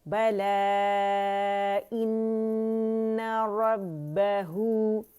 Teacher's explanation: next है बला, ठीक है, बला, यहाँ हमने वक्फ़ जायज़ है, यहाँ पे आप वक्फ़ कर सकते हैं, और अगर रवानी करनी है तो बला इन्ना, मद मुनफसिल जायज़ बनाएंगे, 4 to 5 काउंट्स खींचे जाएंगे